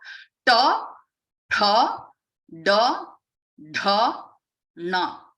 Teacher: cerebral sounds, which are pronounced by rolling the tongue and touching the tip of the tongue to the roof of the mouth.